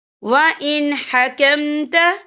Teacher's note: تو ہم یہاں اظہار کریں گے، ہم اسے بنا غننے کے پڑھیں گے